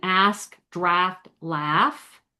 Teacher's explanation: the short A as in ask, draft, laugh becomes an ah